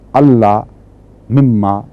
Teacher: کلیت نون غائب اور لام اور میم میں جذب ہو کر اس میں شد پیدا کر دیتا ہے